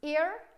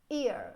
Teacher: I go like from the E sound to the schwa sound in one journey, ear. So I have to change the pronunciation of the vowel, the kind of the position of my tongue to produce this sound.